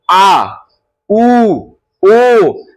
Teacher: पच स्वर में पीछे से आवाज आता है और आपका जीभ एकदम खींचा है। · अब है पक्ष स्वर। पक्ष स्वर में पीछे से आवाज आता है और आपका जीभ एकदम खींचाता है। जैसे बोलिएगा ना आ बोलिएगा तो देखिए जीभ अंदर तरफ जाएगा और थोड़ा सा तनाव महसूस होगा आपको, यानी पीछे तरफ जाता है।